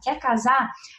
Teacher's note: Ele não botou o R dos infinitivos